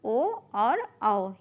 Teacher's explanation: कंठ और ओष्ठ से उच्चारित होते हैं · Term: ओट और कंठ